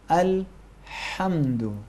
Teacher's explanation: حرف ہا کہاں سے ادا کریں گے؟ حلق کے درمیانی حصے سے پریشر ڈالیں گے، تھوڑا سا زور لگائیں گے.